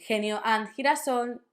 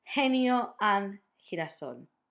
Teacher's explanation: you can do it like a very strong aspirated H from the English. Instead of doing genio and girasol, you would do genio and girasol.